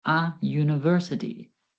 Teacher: The start of the word university sounds like U, a consonant sound.